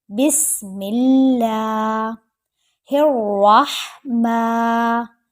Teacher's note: را موٹا کریں گے، را کے اوپر زبر ہے، ہا کو حلق کے درمیان سے لے کر آئیں گے اور میم کو ایک الف کے برابر یعنی 1 سیکنڈ لمبا کر کے پڑھیں گے.